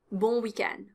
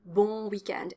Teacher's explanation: end is the stressed syllable here it's longer